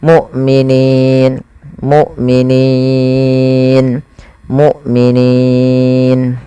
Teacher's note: maka ini kita namakan dengan mad Arit sukun panjangnya berapa harakat kita boleh membaca dengan dua harakat boleh empat boleh pula enam harakat